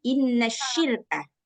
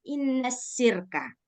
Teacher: Shin punya sifat tafashi. Nah, seharusnya kita bacanya inna syirka.